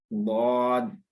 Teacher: अपनी जो दाढ़ें हैं, उनसे ज़ुबान का किनारा मिलाते हुए अदा करेंगे